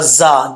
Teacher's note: ये जा जो है ये सीटी के साथ पड़ा जाएगा बगैर सीटी के नहीं पढ़ा जाएगा